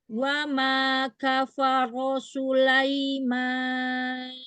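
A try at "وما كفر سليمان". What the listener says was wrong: Jangan su. Tipiskan lagi sinnya.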